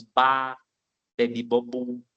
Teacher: Tem bilabial, os dois lábios, eles tocam nos dois lábios.